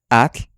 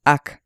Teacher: Lingüísticamente, este sonido se llama alveolar africada. Se considera muda.